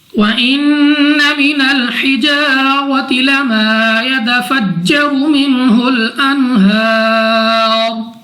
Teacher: نون مشدد میں غنہ کر کے پڑھیں گے